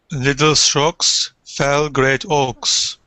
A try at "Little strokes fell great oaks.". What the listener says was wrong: Okay, good pronunciation.